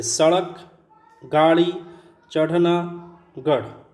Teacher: जिनके उच्चारण में जीभ पहले ऊपर उठकर मूर्धा को स्पर्श करे और फिर झटके के साथ नीचे आए। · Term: उत्क्षिप्त व्यंजन